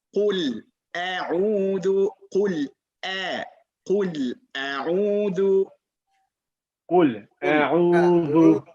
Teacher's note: the hamza is from the bottom of the throat. So we have to go all the way down to the bottom of the throat.